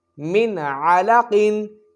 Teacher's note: یہاں اظہار ہوگا، غنہ نہیں ہوگا، اور قاف حروف مستعلیہ میں سے ہے، یہاں قاف کو موٹا پڑھا جائے گا۔